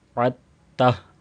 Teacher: چونکہ عین تا کے ساتھ مل رہی ہے تو دال کو حذف کر دیا جائے گا، یہ سائلنٹ ہو جائے گا. وعدتہ، عین کو تا کے ساتھ ملایا جائے گا، اور آخر میں چونکہ ہا ہے اور اس کو ساکن کر کے پڑھا جائے گا۔